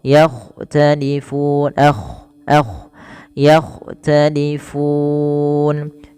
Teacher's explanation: Kemudian yakhtalifun, agak tebalkan sedikit dalam lafal kha, yakhtalifun, yakhtalifun.